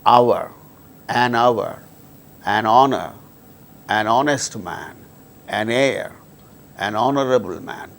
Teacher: these words begin with H, which is a consonant letter, but H becomes silent and these words produce initially vowel sound. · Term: silent H